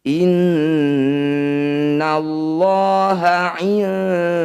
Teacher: Cara bacanya bunyi nun sukun dengungkan 2 harokat. Saat berdengung, lidah kita bergeser posisinya dari posisi nun sukun menuju dal. Pergeseran itulah yang disebut dengan akrob atau dekat. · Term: ikhfa